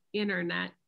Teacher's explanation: We just say internet and the T becomes silent.